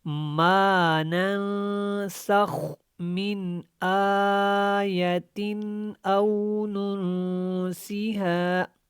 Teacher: اخفا کرنا ہے، اور خا کو ہم نے موٹا پڑھنا ہے